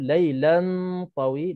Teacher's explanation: tanwin bertemu dengan ta, hukumnya ikhfa haqiqi dengan 2 harakat.